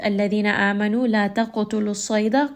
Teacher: Qaf is heavy. Qaf also has qalqala. Sad is going to be heavy here.